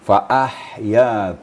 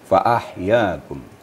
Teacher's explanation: runcing itu H kecil namanya ya jadi cara membacanya faahya di ada hembusan lebih membadai sedikit di kerana dia huruf Hala maka harus terasa di tenggorokkan kita ya faahyakum kemudian lagima di